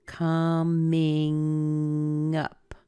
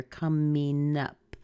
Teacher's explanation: The M is over on the ing part. And if you can, push the NG over into the up. Coming up. Or even sometimes you'll hear coming up.